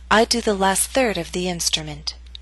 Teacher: primary stress is in the middle of the statement. Your voice will continue to fall after the word third. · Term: falling intonation